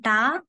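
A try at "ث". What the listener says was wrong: ట కాదు ట కాదు స నాలుక బయటికి తీసుకొచ్చి పల్చగా పెట్టండి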